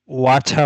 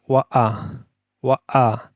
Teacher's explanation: এই যে ওয়া আ, এই যে ওয়া আ বলে একটা মাঝখানে যে একটা ধাক্কা দিল, মানে আওয়াজ বন্ধ করে একটা সেক্তার মতো করলো, এটাকে বলা হয় গ্লোটাল স্টপ।